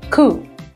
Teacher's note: Another word that comes from French is a word coup, where you don't pronounce P in the end.